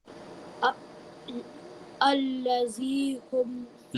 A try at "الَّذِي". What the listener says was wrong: Look, your z sounds like z. You are reading zal as if you are reading za. You have to place the tip of the tongue at the upper tooth, the edge of the upper tooth softly. Alladhi, like this.